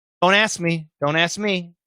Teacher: so yeah the k does disappear